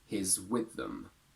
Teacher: when the preposition is with, we do tend to put stress on it, and in that case, the personal pronoun can go weak